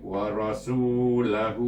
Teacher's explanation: perhatikan di sini R baca dengan tebal